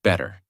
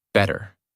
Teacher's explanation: In the first version, your mouth stops more. In the second version, the sound flows more smoothly. That smoothness is the American feeling.